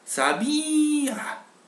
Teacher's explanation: Que la vocal débil ya no es débil, sino es fuerte. Es más fuerte que la vocal fuerte que tiene a un lado.